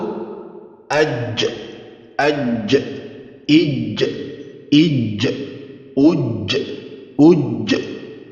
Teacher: Makhrajnya berada pada tengah lidah dan bersentuhan ke langit-langit, dan bila digerakkan dia akan mendekatkan bagian tengah lidah ini ke atas langit-langit. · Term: huruf jim